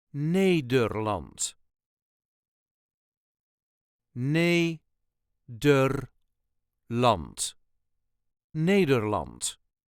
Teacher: The emphasis is on the first syllable